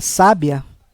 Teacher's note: na primeira palavra, sábia, o som mais aberto, a sílaba tônica, é no sá